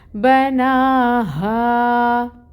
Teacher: یہاں پہ الف مد کا رول ہو رہا ہے، 2 کاؤنٹس لمبا ہا کو کھینچیں گے، اور یہ جو ہا ہے یہ اقصاء الحلق سے ادا ہوگی، بھاری ہا ہوتی ہے، تو اس کو پڑھیں گے بناہا۔